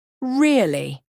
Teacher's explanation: Now I sound surprised. Or if I lower my voice and stretch it out, really? Now I sound suspicious.